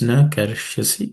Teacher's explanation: Na karishyasi, no aspirated consonants. But in the word karishyasi, the ish is cerebral sh, so the tip of the tongue should point up.